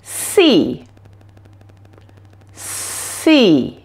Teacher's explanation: For the S sound, there is no voice coming from your vocal cords, only air passing through your mouth. You will notice that the air flows down the middle of your tongue, and your tongue is shaped a little bit like this.